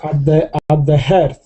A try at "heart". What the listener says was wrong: Yeah, well, this is another word on my list of mispronounced words because it sounds like hurt, but it isn't hurt. It's heart. You should say heart, like a car. So it actually has the same sound. It looks like it should be heard or something like that.